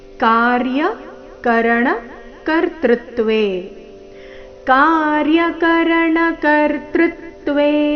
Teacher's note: ಮೊದಲನೇ ಚರಣದಲ್ಲಿ ಒಂದೇ ಒಂದು ಆಘಾತ ಅದು ಕರ್ತೃತ್ವೇ ನಲ್ಲಿ ತೃ ಮೇಲೆ